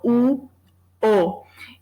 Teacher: o O, ele é mais aberto do que o U, né? O U é a vogal mais fechada. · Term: abertura de vogal